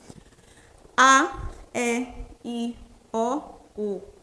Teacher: o A, ele como é uma vogal muito aberta e nenhuma outra vogal supera essa abertura